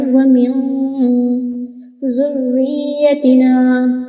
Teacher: را یا زیر ری کو کھینچیں گے، پھر یا بھی آ گئی، ذریتنا، یا زیر ی، ذریتنا۔